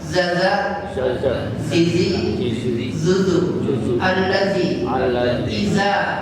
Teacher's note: Za keluarnya dari ujung lidah dikenakan ujung gigi seri atas. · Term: huruf za